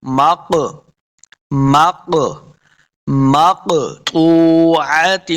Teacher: قاف کو موٹا پڑھنا ہے، قاف حروف مستعلیہ سے ہے، قاف ساکن ہے، اور قاف حروف قلقلہ سے بھی ہے